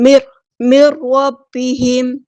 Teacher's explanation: نون ساکن کے بعد را آیا ہے تو یہاں پہ ادغام بلا غنہ ہو رہا ہے، ادغام کرتے ہوئے آپ نے ٹائم نہیں دینا، رکنا نہیں ہے۔ میر، اس طرح ادغام کامل ہو رہا ہے، نون کی آواز کو بالکل ختم کر دیتا ہے